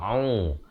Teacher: ain baris dhammah, makhrajnya di pertengahan kerongkong au dengan kadar 2 harakat.